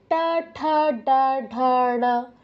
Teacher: তো মূর্ধন্যর উচ্চারণ হচ্ছে মূর্ধায়, টা ঠা ডা ঢা না। ট উচ্চারণ করতে আমাদের জিহ্বাটা আমরা ঠিক যেখানে টাচ করছি, না উচ্চারণ করতে একই জায়গায় টাচ হবে।